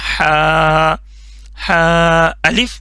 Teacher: अगर ये दोनों बगैर नुक्ते के हों तो वो हा होगा। हा सॉफ्ट वाला हा जो गले के दरमियान वाले हिस्से से निकलता है